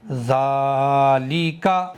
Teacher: کاف کو ذرا سا بھی نہیں کھینچنا ہے